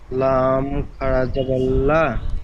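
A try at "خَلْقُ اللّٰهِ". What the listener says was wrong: লা নয় ল, যেহেতু আপনার লাম মুসাদ্দাদের পূর্বে কি এসছে, কফের উপরে কি আছে? পেশ আছে, পেশ।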